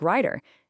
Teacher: when a T sound gets caught between two vowel sounds, it softens into a quick D sound. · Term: alveolar flapping